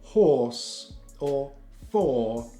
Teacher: this is or or when we make this sound we're putting a tongue to the back of the mouth rounding the lips and dropping a jaw just a little bit or and we